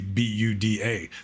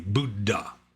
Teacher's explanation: westerners who speak poly speak it with like a western accent like there's no aspirated consonants. You know like d and dh are pronounced the same like Buddha is is spelled like or it's pronounced like it would just be bu u da.